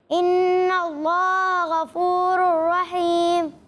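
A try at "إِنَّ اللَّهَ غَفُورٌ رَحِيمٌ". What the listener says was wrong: ٹھیک ہے، غفور اور ٹھیک ہے، غین کو پر پڑھنا ہے، باریک نہیں پڑھنا۔ ماشاءاللہ بہت اچھی کوشش کی آپ سب نے، مزید پریکٹس کرتے رہیں، تکرار کے ساتھ پڑھتے رہیں، انشاءاللہ یہ جو غلطیاں ہوئی ہیں یہ بھی ٹھیک ہو جائیں گی۔ اللہ پاک ہم سب کو صحیح طریقے سے قرآن پاک پڑھنے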